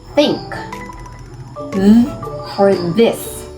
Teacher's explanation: made with the tongue between the teeth, slightly touching them. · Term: dental or interdental